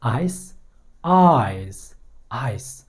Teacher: आइस के एंड में स का आवाज़ आया है और एक वॉइसलेस साउंड है, because there is no vibration at all, तो ये वॉइसलेस साउंड है।